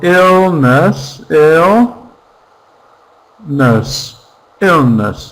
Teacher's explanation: 2 syllables. Stress on the first.